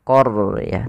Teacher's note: huruf ro yang dia sukun didahului dengan fathah sebagaimana fal qaryah. Maka ro-nya tebal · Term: ro tebal